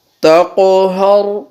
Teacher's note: را کو پر وقف میں کیونکہ را کے پیچھے زبر ہے